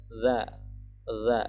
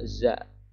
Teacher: Za itu posisi lidah kita menempel di gigi atas kita bagian depan.